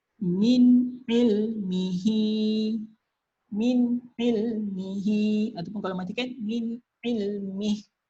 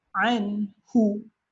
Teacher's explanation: bila nun ada tanda mati dekat atas, ianya dibaca dengan jelas ataupun dalam bahasa tajwidnya izhar. Dibaca dengan jelas bermakna di sini tanpa dengung.